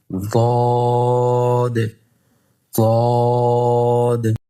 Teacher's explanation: জিহ্বার গোড়ার কিনারা উপরের মাড়ির দাঁতের গোড়ার সঙ্গে লাগায়া